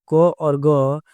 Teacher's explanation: क और ग अल्प प्राण की श्रेणी में आते हैं।